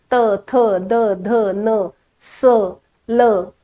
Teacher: मी जेव्हा बोलते तेव्हा माझी जीभ प्रत्येक वेळेस दाताला लागते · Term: दंत्य वर्ण